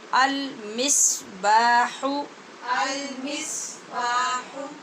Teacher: سواد بولیے اور سیٹی کی آواز پیدا کیجیے